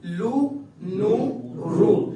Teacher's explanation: زبان کی نوک اوپر کی تالو کی باؤنڈری پر لگتی ہے · اب دیکھیں تینوں میں ہمارے ہونٹ گول ہو رہے ہیں. بعد میں پہلے لو نام کا جب ساؤنڈ نکلتا ہے تب نہیں ہوتے، اس کے فوراً بعد ہی ہو جاتے ہیں، کیونکہ پیش کی علامت ہے. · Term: ہونٹوں کی گلائی